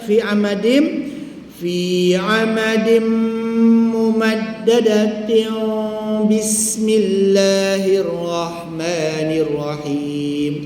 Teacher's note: Jadi wasal itu kena tanggung, kena tahan sikit gunnah iklab 2 harakat.